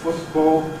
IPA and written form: ˈfʊtbɔːl (football)